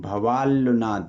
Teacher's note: तो यह दोनों सूत्र मिलके यह रिजल्ट देते हैं कि नकार के परे ल हो तो नकार का ल हो जाता है